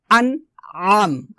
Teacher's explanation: আইনটাকে গলার মাঝখান থেকে চাপ দিয়ে বলতে হবে হামজাটা সাধারণ হবে তবে আইনটাকে একটু কষ্ট করে উচ্চারণ করতে হবে